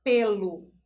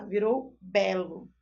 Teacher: Ela tá com o som já fechado. Notem que o E, essa nossa vogalzinha E, ela vem fechada no som dela